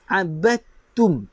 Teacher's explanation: Maksudnya ain baris atas, abatum, terus masuk pada ta. Batum, tak perlu bunyikan dal. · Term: idgham